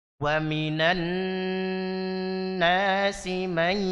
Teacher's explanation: Oke, ditahan ya. pastikan masuk ke hidung may. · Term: idgham bighunah